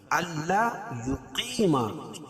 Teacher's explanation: دونوں کو ایک ایک الف کے برابر کھینچ کے پڑھیں گے۔ حدو و مدہ، داللہ، اللہ کے لام سے پہلے زبر یہ پیش ہو تو اللہ کا لام پر پڑا جائے گا۔